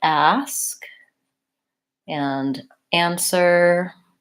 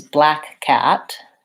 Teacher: And how we say this vowel sound is consistent. I'm always going to be making an a vowel with my mouth fairly open and my tongue forward.